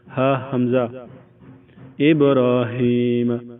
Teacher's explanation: یہ بالکل نچلے حلق کے نچلے حصے سے ہا نکلتا ہے